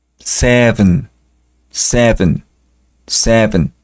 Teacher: la v se pronuncia eh colocando sus dientes de arriba en el labio de abajo Seven Seven Seven parecido a una F de foca después eight